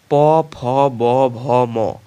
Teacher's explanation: এ ধ্বনিগুলো উচ্চারণের সময় ওষ্ঠের সঙ্গে অধরের স্পর্শ ঘটে। এদের ওষ্ঠধ্বনিও বলা হয়।